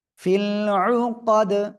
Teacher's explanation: ওয়া মিন শাররিন নাফাসাতি, ফা লাম জের ফিল, আন পেশ কব জবর কা, কা দাল জের দি, উকাদি, অক্ফ করলে দাল সাকিন, তখন কলকলা হবে